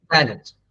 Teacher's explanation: The first syllable is to be stressed.